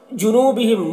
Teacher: جنوبہم، نو یہاں پر واو مدہ ہے، اسے بھی ایک الف کے برابر کھینچ کر پڑھیں گے۔ بہم کے میم میں اظہار شفوی ہو رہا ہے، اسے جلد پڑھیں گے جیسے ہم تم کی میم کو پڑھتے ہیں۔